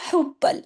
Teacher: हा गले से सख्ती से बा दो मर्तबा है तशदीद की वजह से